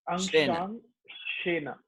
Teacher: Nasal sound, the Anusvara, which comes after vowels.